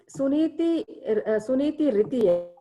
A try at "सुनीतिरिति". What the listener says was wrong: Riti, small t. Small re, small t.